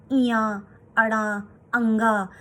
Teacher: तो ये नाक से आवाज आती है, तो पंचमाक्षर का उच्चारण स्थान नासिका है।